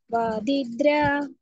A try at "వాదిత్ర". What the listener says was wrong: ద్ర కాదు మాతాజీ. త్ర త్ర త్ర ద్ర కాదు. వాదిత్ర